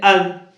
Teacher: زال اس کا مخرج میں بتا دیتا ہوں. زبان کی نوک اور اوپر کے سامنے کے دو دانتوں کے کناروں سے ادا ہوتا ہے. جیسے آپ سا اور تا ادا کر رہے تھے، وہیں سے زال ادا ہوتا ہے.